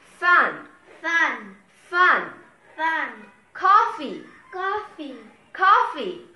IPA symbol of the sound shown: f